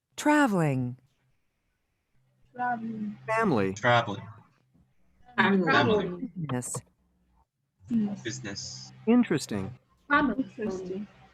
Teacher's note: notice how one vowel in each of these words is silent or very reduced